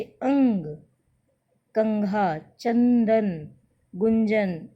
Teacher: देखो बच्चों, जो हमारे बोलने में जैसे अंग, कंघा, चंदन, गुंजन, इस तरह के जो शब्द होते हैं, उनमें नासिक्य स्वर लगा है और उन्हें उनकी आवाज़ जब निकलती है तो हमारी नाक और हमारे मुंह दोनों के रास्ते से हवा बाहर आती है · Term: नासिक्य व्यंजन